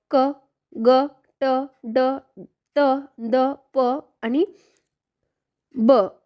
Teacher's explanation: ज्यांचा उच्चार करताना हवा आडवून जोरात बाहेर फेकली जाते तेव्हा त्याला आपण स्फोटक व्यंजन असं म्हणतो किंवा स्फोटक असं म्हटलं जातं मग ही कुठली आहेत तर क